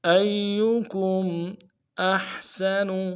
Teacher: حا کو گہرائی سے ادا کریں گے، سین کی سیٹی باریک ہوگی، نون کو نرم سے ادا کریں گے.